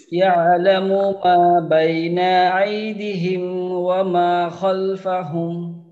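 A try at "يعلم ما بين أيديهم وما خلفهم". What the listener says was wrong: আচ্ছা, এই যে দি, এই টানটা আরেকটু দেওয়ার দরকার। আই দি হিম, আই দি হিম।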